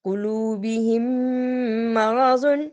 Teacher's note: فی قلوبہم مرض اس لیے پڑھا کہ میم ساکن کے بعد پھر میم آ رہا تھا، جس کو کہ ادغام شفوی کہتے ہیں، یعنی تھوڑی دیر ہم نے اس پہ دیر لگائی